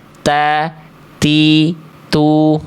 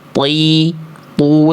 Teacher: Kalau huruf tho dari segi sifat nafas dia sifatnya jahr. Jahr itu artinya tertahan nafas ya.